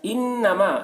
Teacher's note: نون مشدد ہے، یہاں پر غنہ ہوگا